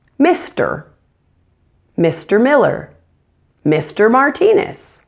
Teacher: most Americans will pronounce our ers completely.